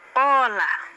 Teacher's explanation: Qola itu dia hanya isti'la tapi nggak punya idbak